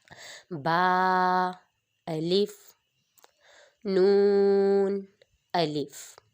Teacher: اب جو نون ہے وہ ہمارا حروف طرافیہ میں سے ہے۔ جب ہم اپنے زبان کے کنارے کو اوپر تالو کی جانب لے کر جاتے ہیں تو دانتوں کی جڑ کو لگائیں گے تو پھر یہ ہمارا نون ادا ہوگا، اور اس نون کے اوپر مد بنی ہوتی ہے، مد، اس لیے اس کو با تا کی نسبت تھوڑا سا زیادہ لمبا کریں گے۔ · اب ہم نے پیچھے پڑھا تھا کہ با حروف شفاویہ میں سے ہے، یہ دونوں ہونٹوں کے تر حصے سے ادا ہوتا ہے۔ جب ہم اپنے دونوں ہونٹوں کو بند کر کے پھر کھولتے ہیں تو یہ ادا ہوتا ہے۔